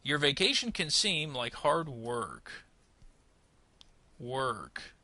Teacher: Notice we're going to rise and then fall at the period.